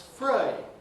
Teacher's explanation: Three, diphthong e, th fronting to f gives us free.